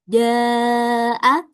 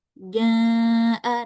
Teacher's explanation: tidak ada suara bindeng sama sekali, hidungnya juga tidak bergetar